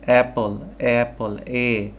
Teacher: আমি আমার ঠোঁট ইউজ করছি না আমি আমার দাঁত ইউজ করছি না আমি আমার জিহ্বা ইউজ করছি না সরাসরি আমার গলা থেকে সাউন্ডটা বের হচ্ছে